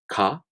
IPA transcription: ka